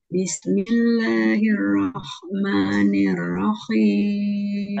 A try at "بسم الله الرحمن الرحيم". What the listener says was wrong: Nah, huruf H-nya jangan tercampur sama huruf Kho ya. Bismillahirrahmanirrahim. Nah, ada suara itunya. Jadi dia harus mulus.